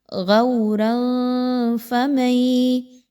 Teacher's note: پہلے را کے اوپر 2 زبر کی تنوین، اس کے بعد فا اخفا کریں گے